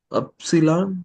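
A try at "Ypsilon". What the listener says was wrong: Not upsilon. U is upsilon.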